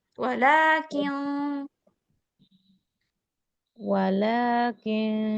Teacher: kalau lakin itu ditulisnya enggak ada alifnya cuma dibacanya panjang